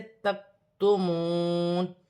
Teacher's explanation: کاف ساکن ہے، باریک حرف میں سے ہے، باریک پڑھی جائے گی